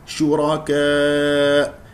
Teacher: لنقف على الهمزه بقفل الاوتار الصوتيه ونسمع صوتها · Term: النبر